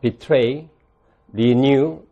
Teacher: 다 마지막 음절에 강세 있고 모음으로 끝납니다.